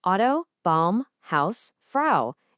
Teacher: It's not ah, ooh, it's always one smooth, fused sound, ow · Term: ow sound